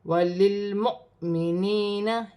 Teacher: حمزہ کے اوپر جزم کی حرکت ہے، واو خالی ہے تو حمزہ کو جھٹکے کے ساتھ پڑھا جائے گا